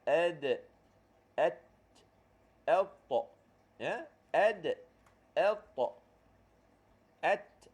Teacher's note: Ujung lidah menyentuh pangkal gigi kacip atas.